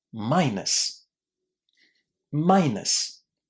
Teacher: It's a really, really short ending. And it's pronounced this way because there is no emphasis, no stress on this ending in this word. And generally speaking, endings that are not stressed in English are pronounced in this very, very short way.